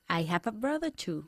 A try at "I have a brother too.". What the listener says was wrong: Y notas cómo estamos uniendo las palabras have y a.